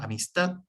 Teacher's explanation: Nosotros vemos palabras como amistad, en este caso que se marca la última, se acentúa solamente con entonación en la última sílaba. En la última sílaba, pero sin acento marcado porque no termina en N o en S.